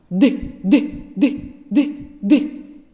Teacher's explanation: ми його вимовляємо губи і зуби набувають положення наступного голосного звука кінчик та передня частина спинки язика упираються у верхні зубки струмінь повітря розриває зімкнення між язиком та верхніми зубами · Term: звук д